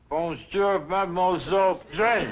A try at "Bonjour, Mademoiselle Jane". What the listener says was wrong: That's very good, except for the mwah sound. It must be soft. Mwah. Watch my lips closely. Mwah.